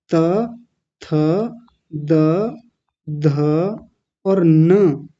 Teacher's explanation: हमारी जीभ कहाँ जाकर के लगती है? दांतों से जाकर के लगती है। त, थ, द, ध, न, ऊपर वाले दांतों से लगती है ना। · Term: दंतीय वर्ण